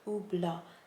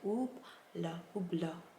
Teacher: So the first H is silent and T at the end is also silent.